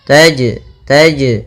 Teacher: huruf Syamsiah wasyamsu Kemudian tajri tajri pada hafal Jim ini ada Jim sukun atau Jim mati maka ia kita namakan dengan bacaan Qalqalah yang mana suara jimnya harus memantul